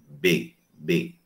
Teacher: Então, quanto ao modo e lugar de articulação, B é consoante oclusiva bilabial. B, B. Quando eu digo B, eu coloco a mãozinha aqui no pescoço e vejo uma vibração das cordas vocais.